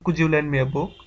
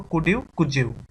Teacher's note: ডি এবং ইউ দুইটাই প্রভাবিত হয়ে যায় জেড এর উচ্চারণ হয়ে যাচ্ছে। একটু খেয়াল করে দেখো, কুড ইউ, কুজ ইউ, এটা যখন আমরা ফার্স্ট বলি তখন এই জিনিসটা হয়। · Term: রেসিপ্রোকাল অ্যাসিমিলেশন